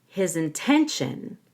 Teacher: the t i sounds like an sh